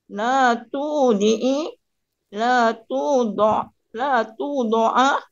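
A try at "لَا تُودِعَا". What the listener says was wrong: La tudi'a. Kenapa jadi la tudo? Jadi kalau kasroh, kasroh semua. Kalau fathah, fathah semua.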